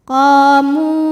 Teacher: Sebab ada waw sukun didahului dhammah, maka huruf mim panjang 2 harokat · karena ada alif didahului fathah. Maka huruf qaf panjang 2 harokat. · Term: at-tabi'i zahiri